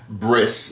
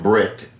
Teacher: there are Jews who they take the T sound on the end and put an S sound I'm wondering if that's why bris is actually from Brit breit